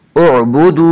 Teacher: उअबुदू, वाव मद्दा वो वाव जो साकिन हो उससे पहले पेश हो, वाव मद्दा को एक अलिफ के बराबर खींच कर पढ़ेंगे।